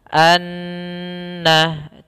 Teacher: cara membacanya adalah suara annya kita tahan dua harakat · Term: gunnah